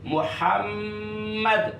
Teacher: پہلا میم ساکن دوسرے میں ادغام کر دیا، یہ بن گیا محمد.